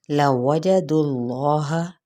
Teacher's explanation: दाल की पेश को लाम के साथ और इसमें जलाला लाम पुर पढ़ा जाएगा।